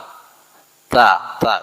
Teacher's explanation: bertemu pangkal dua gigi seri muka yang atas bagian dalam